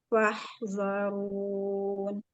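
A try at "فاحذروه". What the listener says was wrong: Fahzaruh. Huruf H. Bukan huruf nun ya.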